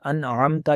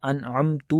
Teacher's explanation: اگر آخر پر پیش کر دی جائے جلدی میں پڑھتے ہوئے انعمتا کہنے کی بجائے انعمتو پڑھ دیں تو یہ معنی کیا ہو جائے گا کہ میں نے انعام کیا.